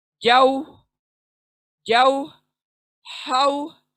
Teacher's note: वाव को अदा करते हुए देखें, होंठ गोल होने चाहिए, यानी पूरा इंसाफ करें वाव के साथ, उसकी गोलाई के साथ। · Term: वाव लीन